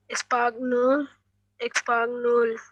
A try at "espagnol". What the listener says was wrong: G is silent. Espanol, espanol.